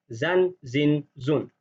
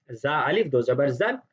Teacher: اور ایک چیز کا خیال رکھنا ہے کہ زا کے اوپر زیادہ تشدید نہیں کرنی، کیونکہ یہ حروف شدیدہ میں سے نہیں ہے، اس کو زا ایسے کر کے پڑھنا بالکل غلط ہے۔